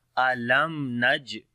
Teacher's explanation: After the meme sakin, the next letter is noon. We make izhar shafawi, the clear sound of meme